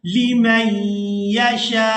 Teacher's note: अब यहाँ पर वक़फ़ करेंगे तो वक़फ़ की सूरत में हमज़ा जो है ये साकिन हो जाएगा। जब एंड पे हमज़ा की अदायगी होगी तो हमज़ा जो है झटके के साथ अदा होगा